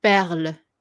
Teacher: you don't put the emphasis on the E, even though you do pronounce it.